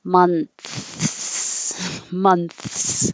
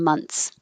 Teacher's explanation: most native speakers are making the shortcut and not making a th at all